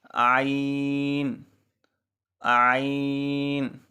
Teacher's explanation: ان حروف میں سے ہے جو وسط حلق سے ادا ہوتے ہیں، یعنی حلق کے درمیانے حصے سے. عین اور حا، یہ دو حرف ایسے ہیں جو ایک ہی جگہ سے ادا ہوتے ہیں.